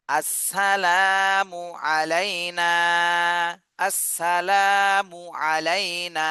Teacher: জবর না আলাইনা এটা কিন্তু লিনের হরফ জবরের বামে জজমলা ইয়া লিনের হরফ দ্রুত বলতে হবে আলাইনা নাতে এক আলিফ টান দিতে হবে